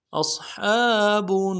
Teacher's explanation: کریں گے، فَأُولَئِكَ اصحاب، حمزہ کو صاد کے ساتھ ملانا ہے، صاد کو موٹا کرنا ہے، موٹا کریں گے، صاد کی سیٹی موٹی ہوگی